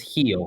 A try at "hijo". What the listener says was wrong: You don't say the H.